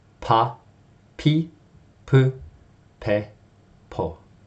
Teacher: So before you make the p sound, right, there's built up pressure behind your mouth. And as soon as you press your lips together, you release a puff of air with the p sound